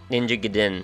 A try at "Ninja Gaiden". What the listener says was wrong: You put the emphasis on the wrong syllable.